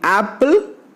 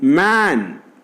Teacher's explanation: And the lips are neutral, that means lips are unrounded. A is a front vowel, below half open and unrounded vowel.